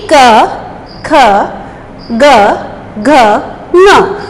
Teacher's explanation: इनका उच्चारण करते समय हवा मुख से रुककर बाहर आती है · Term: व्यंजन